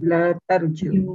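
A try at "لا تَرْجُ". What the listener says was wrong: La tarju. Urju, la tarju, jangan panjang. Kalau ini, kalau yarju, panjang. Yarju, roja, yarju, urju, la tarju.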